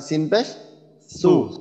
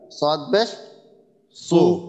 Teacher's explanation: আর সিনের ক্ষেত্রে জিহ্বার গোড়াটা আমরা স্বাভাবিক রাখবো, তাহলে ইনশাল্লাহ। এ সিনটা পাতলা হবে আর এই সৎটা একটু মোটা হবে